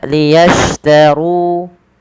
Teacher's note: Maka liyashtaru, tebalkan huruf ro-nya karena dia ro tafkhim